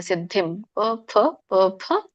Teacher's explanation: ಗಮನಿಸಿ ಸಿದ್ಧಿಂ ಇಲ್ಲಿ ಮುಂದೆ ಅನುಸ್ವಾರ ಸೊನ್ನೆ ಮುಂದೆ ಪವತ್ತಿದೆ ಸಾರಿ ಪದೆ ಸೋ ಪ ವರ್ಗದಲ್ಲಿ ಬರೋದ್ರಿಂದ ಮ ಉಚ್ಚಾರಣೆ ಆಗುತ್ತೆ